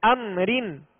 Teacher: اب ہم نے را کو باریک پڑھنے کی جو صورتیں پڑھی تھی کہ را کے نیچے زیر ہو یا را کے نیچے دو زیر کی تنوین ہو تو را کو باریک پڑھیں گے، لہذا اس را کو بھی باریک پڑھیں گے اس لیے کہ را کے نیچے دو زیر ہیں